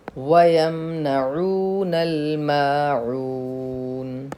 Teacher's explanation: واو جس پر جزم ہو اور جس سے پہلے پیش ہو تھوڑا کھینچے اور معروف پڑھیں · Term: واو مدہ